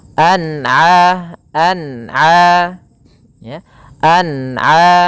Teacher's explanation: Apabila ada lafal an'ama, yaitu adanya huruf sukun bertemu dengan huruf ain, maka dinamakan dengan dinamakan dengan bacaan izhar halqi, dibaca dengan jelas suara nunnya